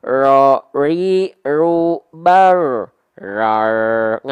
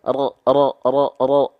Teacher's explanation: ya pastikan dia tetap ada getarannya karena dia takrir Wara bakriril dia getarannya tetap ada walaupun tak berlebihan tapi jangan sampai hilang